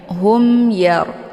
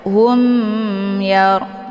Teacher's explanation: Jadi tidak perlu didengungkan di sini ya, karena ini idhar syafawi, dibacanya jelas ya.